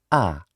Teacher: This vowel is neither front nor back. It lies on the central axis. It is an open central unrounded vowel.